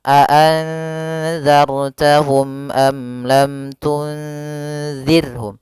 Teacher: Karena izhar syafawi yaitu apabila ada mim mati bertemu seluruh huruf hijaiyah kecuali mim dan ba, maka dia dinamakan dengan izhar syafawi. Maka ketiganya harus jelas suara mimnya dan tidak boleh ditahan